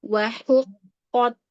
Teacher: Hu tipis, qaf tebal